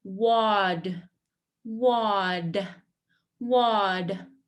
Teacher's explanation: in American English, it does not sound like T. It sounds more like a D.